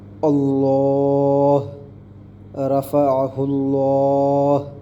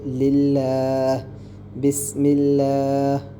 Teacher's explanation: لفظ اللہ کا جو لام ہے اس سے پہلے اگر زبر یا پیش ہو تو لام کو موٹا بولڈ پڑھیں گے